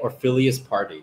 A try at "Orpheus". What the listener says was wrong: You combine what it's actually called with Ophelia. There's no Ophelia in it. The first syllable is right, though. Orpheus.